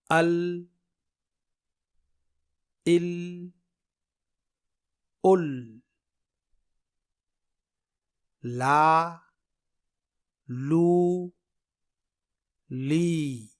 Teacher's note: آپ بار بار ال پڑھ کر کے دیکھیے، آپ کو خود سمجھ میں آ جائے گا کہ ال بولنے میں زبان کے دونوں کنارے شامل ہیں، نہ کہ ایک کنارہ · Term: حرف لام